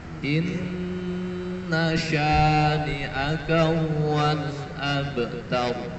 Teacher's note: Nah, inna syani'aka ini shinnya shin yang tebal.